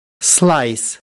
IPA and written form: slaɪs (slice)